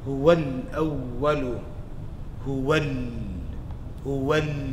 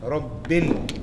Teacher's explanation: So you're dropping the alif, you're reading the lam, and in both of these scenarios, you're doing izhar. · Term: alif lam